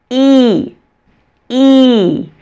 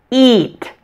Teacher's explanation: the long e is a tense vowel this means that the muscles in your mouth and tongue are tense feel them working like you're going to the gym you're working